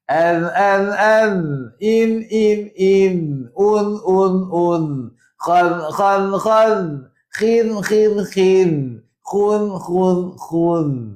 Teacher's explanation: Dia tak lantunkan huruf zal keluar hujung lidah.